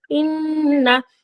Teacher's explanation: নুনের ওপর তাসদিদ, তাই নুনকে মুসাদ্দাদ বলা হচ্ছে এখানে। এখানে ওয়াজিব গুন্না একালি পরিমাণ গুন্না করে পড়তে হবে।